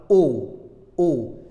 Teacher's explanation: les lèvres sont prolongées il y a un arrondissement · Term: voyelle orale